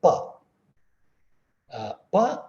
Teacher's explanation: pa is a labial sound bilabial sound you need to close completely there has to be a complete closure of both the lips try you don't have to do it online with me you